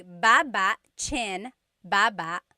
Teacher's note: Emphasis is on the first syllable.